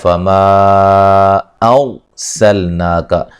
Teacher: را کو موٹا ادا کریں گے، را ساکن سے پہلے زبر ہے، ٹھیک ہے، اس وجہ سے را کو موٹا ادا کریں گے